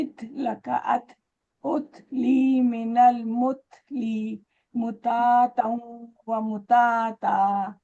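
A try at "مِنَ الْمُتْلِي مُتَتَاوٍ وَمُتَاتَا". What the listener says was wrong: नहीं नहीं fast fast fast, आप तो स्लो, जो पढ़े वैसे ही पढ़ा। उसको स्पीड को बढ़ाइए आप, फिर देखते क्या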